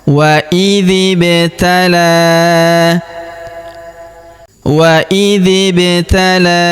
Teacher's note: pada huruf ba-nya yang berharokat sukun kita pantulkan atau kita qalqalahkan ya · huruf dzi langsung sambung ke huruf ba yang berharokat sukun, langsung masuk ke sini karena di depan huruf dzi terdapat alif, yaitu hamzah wasol, hamzah penyambung antara kata sebelumnya dan kata setelahnya ya.